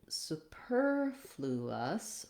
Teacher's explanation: get to superfluous we have a different syllable stress pattern so here my stressed syllable is on the per that's going to be longer and the others are going to be shorter interestingly this one doesn't have a change in the vowel